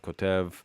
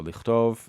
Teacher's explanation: The ka becomes cha after a vowel at the beginning here.